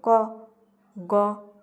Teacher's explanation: দেখো কম সময় লাগে। শ্বাসবায়ুটা কম পরিমাণে ব্যবহৃত হয় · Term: অল্পপ্রাণ ব্যঞ্জন ধ্বনি